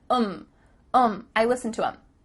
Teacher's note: the word them has the th cut out and instead you're saying um